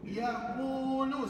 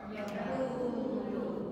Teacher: Waw mati sebelumnya baris satu di depan. Maka itulah menyebabkan ku itu dibaca dua harakat. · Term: mat asli